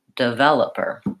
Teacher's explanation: the word developer has second syllable stress which means the sound vowel should be longer and the first and last syllable should be shorter